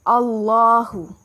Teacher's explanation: لام جلالہ موٹا پڑھا جائے گا، اور کھڑا زبر ہے تو 2 کا مد دے کر پڑھیں گے۔